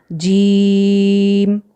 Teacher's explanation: जुबान को ऊपर तालू की तरफ आपने लगाना है और दांतों के अंदर नहीं लगाना